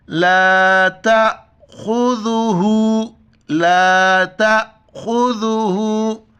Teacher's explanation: دیکھو خا کو موٹا پڑھیں گے